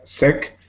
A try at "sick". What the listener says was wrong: Try to put your tongue a little bit up and close your mouth just a tiny bit when you say sick. open your mouth too much, it sounds like eh. we want to be careful not to say sec, but to say sick. really close sounds.